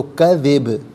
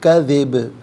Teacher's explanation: با چونکہ حرف قلقلہ ہے تو آواز لوٹتی ہوئی محسوس ہونی چاہیے سکون کے وقت، تو کذب، کذب نہیں کذب۔